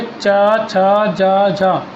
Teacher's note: तो चा जो बोला जाता है हमारे तालु से बोला जाता है, ठीक है, जो चा वर्ग होता है हमारा तालु से बोला जाता है।